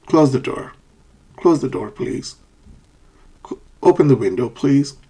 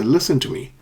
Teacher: these are commands or requests asking people a favor, and they are said with a falling intonation.